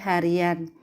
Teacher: akan muncul bunyi semivokal y kata hari ditambah sufiksan akan menjadi harian · Nah, contoh lain seperti yang telah disebutkan di atas, yaitu dalam proses pengimbuhan sufiks an pada dasar hari akan muncul bunyi semivokal Y